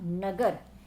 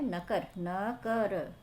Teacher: तो ये क्या हुआ, व्यंजनों का अघोषीकरण। सघोष से व्यंजन क्या हो गए हैं, अघोष हो गए हैं